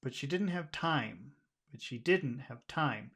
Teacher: I just naturally want to just emphasize the word time